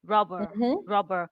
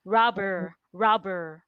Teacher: for the British pronunciation, the R is almost not there